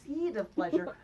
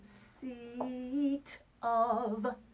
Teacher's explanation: really do a little aspirate and pop that tongue there right behind the back of the top teeth, just a little bit more.